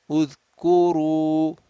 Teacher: Ra with a dhamma, heavy again. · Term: Ra heavy